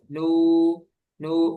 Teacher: Jadi ke bawah Ketika sama baca nunnya. nunnya itu memang masuk hidung, tapi ketika panjangnya itu al-jauf